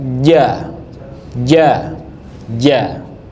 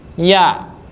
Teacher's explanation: Nah, ya itu paling tipis. Ja yang paling banyak nempel di langit-langit. Kalau ya cuma naik doang.